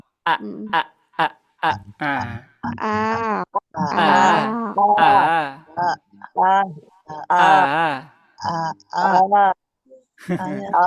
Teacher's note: Hamzah keluarnya dari ee tenggorokan bagian bawah.